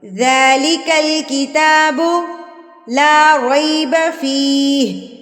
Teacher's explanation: 2 حرکات کے برابر بھی کر سکتے ہیں، دونوں صحیح ہے. تو ذال کے اوپر کھڑی زبر ہے تو اس کو ہم 1 حرکت کے برابر لمبا کریں گے